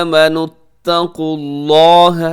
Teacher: لفظ اللہ موٹا رکھیے گا، اس سے پہلے پیش ہے